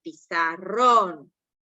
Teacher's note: la sílaba tónica la aguda suena fuerte al final